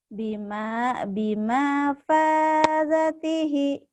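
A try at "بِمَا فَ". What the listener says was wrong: Bima fazatihi gitu. Bukan, maknya pan pendek. Bima fa, tekan di pa.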